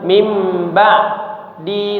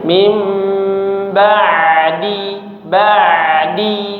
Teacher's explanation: setelah selesai ainnya langsung bersambung huruf dalnya tidak diputus-putus